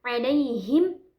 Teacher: Alaihim yaitu dari tengah tenggorokan, bukan dari pangkal tenggorokan ya. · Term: ain